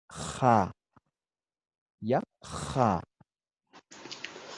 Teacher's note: Entonces, en Aymara es como la J, pero raspada.